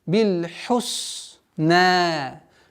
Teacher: Обратите внимание на полноценное произношение звука ха, гортанный звук. Бил хусна. Аннулируется удлинительная буква, остается удлинительный звук в размере 2 огласовок.